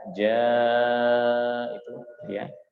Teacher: Ja sedikit panjang dari bacaan ma. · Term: mad wajib muttasil